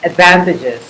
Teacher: the vowels at the end of the word are shortened